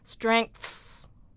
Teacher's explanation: So, in strengths, strengths is ng, th [voiceless], s.